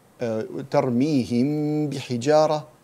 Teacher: we hide the mim and pronounce it between the idhar and idgham. It's not idhar, it's not idgham, it's ikhfa, al-ikhfa.